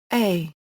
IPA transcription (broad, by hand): uː